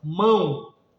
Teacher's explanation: você escreve o, mas tem aquele som breve de u